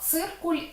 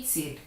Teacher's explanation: Ми напишемо однакову літеру ц, але звучатимуть ці два слова абсолютно по-різному. Ц у першому варіанті буде твердий, у другому м'який ц. Тобто це будуть абсолютно різні звуки, хоча літера залишається однаковою.